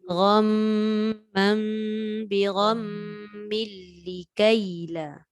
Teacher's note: فأصابكم غما بغم Dia ada 3 tu. Gham dah dengung, mam dah dengung, bigham tu pun dengung.